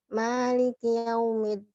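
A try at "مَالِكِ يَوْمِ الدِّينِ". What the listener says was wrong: مالكي بدون غنة.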